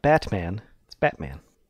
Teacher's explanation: that's the glottal stop when you close your throat up it down at the glottis yeah we don't have that · whenever you say Batman you don't pronounce the T